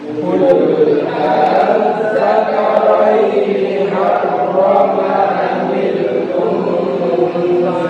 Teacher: Kalau diringankan menjadi a. Jadi antara hamzah sama alif.